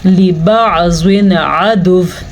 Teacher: یہاں پہ نون تنوین کے بعد والا حرف حروف حلقی میں سے ہے، تو ہم نون تنوین کو ظاہر کر کے پڑھیں گے اور بغیر غنہ کے پڑھیں گے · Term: اظہار